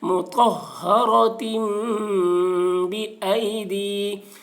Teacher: پڑھیں، مجہول آواز سے بچیں، مطہرۃ بئی، دال یا زیر دی، یا ساکن سے پہلے زیر ہے، یا مدہ ہوا اس لیے یا مدہ کو ایک الف کے برابر کھینچ کر پڑھیں گے